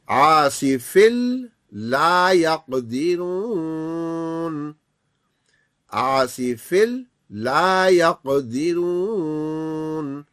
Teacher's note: تنوین یا نون ساکن کے بعد یرملون کا کوئی حرف آئے گا تو بیچ سے نون ہٹے گا اور پچھلا حرف اگلے سے مل جائے گا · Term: یرملون کا قاعدہ